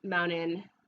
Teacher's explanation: in mountain we say an N instead of a T